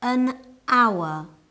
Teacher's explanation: we use n because the H in hour is silent